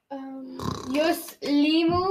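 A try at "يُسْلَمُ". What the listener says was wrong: The yus part was right. You said yuslim.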